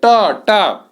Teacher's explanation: ट आपकी जीभ मुड़कर ऊपर लड़ती है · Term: मूर्धन्य